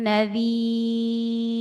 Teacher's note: Tipis rnya nadir. Kenapa tipis? Karena sebelumnya ada ya sukun dan kasrah.